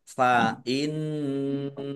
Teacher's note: nun tasdid bacaan gunnah dibaca mendengung ditahan biar tampak dengungannya